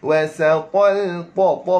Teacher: ta mesti kena tebalkan sebab apa kena tebal tuan-tuan sekalian? Huruf ta adalah huruf isti'la.